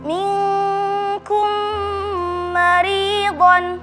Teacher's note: Kedua, idgham mutamatsilain pada kata minkum maridun karena ada mim sukun bertemu dengan huruf mim yang berharakat, dibaca dengung